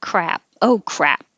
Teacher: Just hold your lips for the P when you're done.